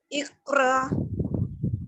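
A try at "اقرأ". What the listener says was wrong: नहीं, झटका देना है, र, इक़रा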